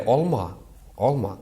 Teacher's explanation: среднему диалекту свойственно огубленный звук «а». То есть, когда мы говорим «а», мы немножко не говорим чисто «а», как в русском, например, языке, да?